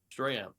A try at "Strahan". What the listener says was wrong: Strahan. Not ham. Han. Strahan.